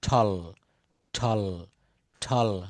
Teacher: টি এর উচ্চারণ ট না হয়ে ঠ এর মত উচ্চারণ করতে হয়